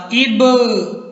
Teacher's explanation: با حروف کلکلہ میں سے ہے، یہ با ساکن ہے تو اس کو کیا کریں گے؟ ہلا کے پڑھیں گے